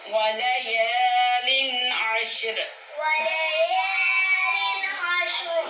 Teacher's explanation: ولیال کے یا کو کھینچ کے پڑھیں گے کیونکہ الف مدہ ہے، جب الف سے پہلے حرف پہ زبر ہو تو وہ الف مدہ ہوتا ہے.